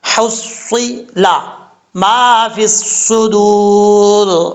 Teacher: سواد حروف مستعلیہ میں سے ہے، پر پڑھا جائے گا